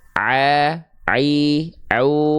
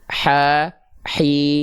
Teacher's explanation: kalau a dia tidak dialirkan dengan nafas teman-teman sekalian kalau H kecil dia dialirkan